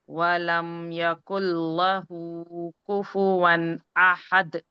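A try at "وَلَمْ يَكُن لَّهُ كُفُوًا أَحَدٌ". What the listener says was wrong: हाँ लेकिन हम आपने ये वलम, ये जल्दी पढ़ दिया, वलम यकुल लहू कर दिया, वलम यहाँ पे क्या है, मीम पे सुकून है, मतलब मीम तवस्सुद है ना, हाँ तो आपने यहाँ पे जल्दी कर दी है, आपने कहा वलम यकुल लहू, जल्दी हो गया ना, वलम यकुल लहू,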